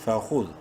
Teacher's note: دال کو پراپر اپنے مخرج یعنی زبان کی نوک اوپر والے سامنے والے دانتوں کے بیچ میں لگا کر پڑھیں گے